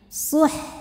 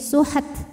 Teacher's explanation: Jadi jangan sampai H-nya dipantulin, suhat, bukan suhat karena H bukan huruf pantul ya, melainkan dialirkan.